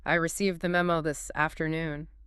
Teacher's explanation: You'd have a sharp stress and more volume on memo. A quick clip delivery and a very decisive falling tone at the end. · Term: strong, controlled anger